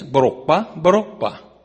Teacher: The third time I pinched my nose together and I said borokba, which raised the tone of my voice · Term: tonal language